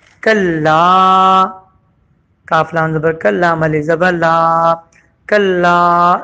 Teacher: اس کے بعد کلا، کاف لام زبر کلا، مل زبر لا، کلا، لام کو کھینچا گیا ایک الف کے برابر